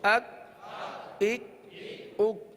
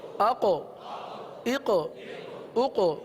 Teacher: دیکھیے ایک طرف پہلے کاف پڑھا پھر دوسری طرف قوف, یہ دو حروف ہم نے پڑھے. کاف کو ہم نے باریک بھی پڑھا, قلقلہ نہیں کیا. قوف کو پر بھی پڑھا اور اس میں قلقلہ بھی ادا ہوا ہے, لہٰذا ان دونوں میں بھی فرق رکھنا ہے.